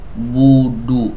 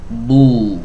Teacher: Jadi huruf ba itu makhrajnya ada di dua bibir enggak dimonyongkan mingkem biasa